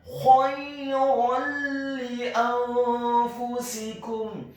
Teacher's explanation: Dalam hal ini adalah huruf lam yang kasroh, maka hukum bacaannya adalah memasukkan dengan tanpa dengung, idgham bila gunnah.